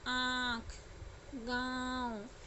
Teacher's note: तो उसके उच्चारण में क्या हो जाता है? नाक से भी ध्वनि निकलती है और गले से भी, इसलिए उसको अनुनासिक कहा गया है